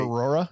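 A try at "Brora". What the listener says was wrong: You added a syllable. I think it's just, you said it right the first time.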